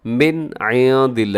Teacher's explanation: آپ نے اظہار حلقی کرنا ہے، یہ نون کو ظاہر کر کے پڑھنا ہے، غنہ نہیں کرنا، آواز کو ناک میں نہیں لے جانا۔ من عند اللہ، ایسے تیزی سے پڑھ دینا ہے، اسے کہا جاتا ہے اظہار حلقی۔